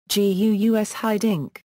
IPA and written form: ˈɣys ˈɦɪdɪŋk (Guus Hiddink)